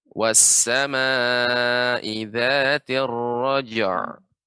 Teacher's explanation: ain ini termasuk sifatnya dia, ya, bainiyah, adanya aliran sedikit udara. Jadi tidak syiddah, tidak roja.